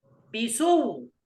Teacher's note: أن نبدل الهمزة واوا ثم ندغم الواو الأولى في الثانية فنقرأ بيسو هكذا.